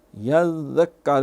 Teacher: آگے یذکرو، یذکرو، یہ زال ہے، اس کو اکثر سیٹی مار جاتے ہیں، یذکرو، یہ پھر پچھلے بارہ زا ہو جائے گا۔ زال نرمی سے یہ ادا کیا جاتا ہے، اس میں سیٹی نہیں ہوتی۔